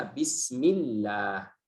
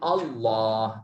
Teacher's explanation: tipis karena sebelumnya ada harakat kasrah.